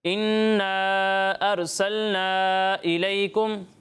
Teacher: دونوں جگہوں پر مد منفصل ہے، دونوں جگہوں پر 2 یا 2.5 الف کے برابر آپ نے کھینچ کر پڑھنا ہے، اور غنہ کی مقدار بھی آپ نے پوری کرنی ہے، ٹھیک ہے۔